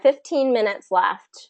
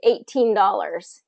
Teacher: we're going to stress the teen we're going to stress that second syllable